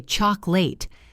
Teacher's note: The strong clear vowel is in the stressed syllable and the weak lazy vowel, the schwa, is in the unstressed syllables · We say chocolate. The middle becomes a schwah.